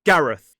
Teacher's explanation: So, it ends in that voiceless TH sound /θ/. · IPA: /ˈɡærəθ/